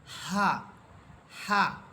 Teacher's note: যে হা এই হা আপনারা উচ্চারণ করবেন একেবারে স্বাভাবিকভাবে হা অর্থাৎ বাতাসটা কোথাও আটকাবে না বরং হা বলার সাথে সাথে বাতাসটা বাহিরে বের হয়ে আসবে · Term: গোল হা